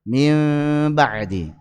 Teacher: ada para ulama yang baca dengan furjah, tarkul furjah, yaitu dengan renggang, mim ba'di.